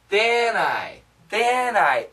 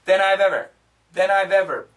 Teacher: if you listen carefully the N connects